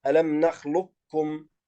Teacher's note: هذا يكون إدغام ناقص، يعني ندغم القاف في الكاف لكن تبقى صفة الاستعلاء في حرف القاف